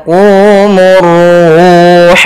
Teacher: alif lam syamsiah yang mana Ini dia tidak dibaca Alif lamnya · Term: alif lam syamsiyah